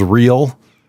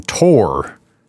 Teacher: And it's just 2 syllables, real, and then tor. And they emphasize the tor.